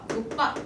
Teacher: 기역 뒤에 비읍은 된소리로 발음한다